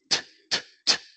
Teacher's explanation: the T sound t t doesn't generate vibration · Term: voiceless sound